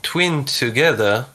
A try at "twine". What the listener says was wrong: Twine or twin? You said the first. You said twine, but now you say twin. Twin or twine? Twine. Twine.